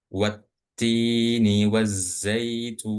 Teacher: Oke, kemudian kita lanjut ke alif lam syamsiyah. Alif lam syamsiyah itu lamnya enggak dibaca dan alifnya juga enggak dibaca ketika ee alif lam ini didahului sebuah huruf atau sebuah kata.